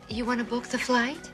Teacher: the travel agent connected her words, making it change from want to wanna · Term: connected speech